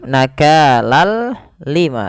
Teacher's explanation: Idghamnya adalah kita memasukkan tanwin ke huruf lam, seraya kita hilangkan suara nunnya dan kita ganti dengan huruf lam. Awalnya nakalan ketemu lam, ganti dengan lam, nakalal lima, tapi tidak disertai dengan gunnah, tidak ditahan seperti ini. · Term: idgham bila gunnah, idgham bila ghunah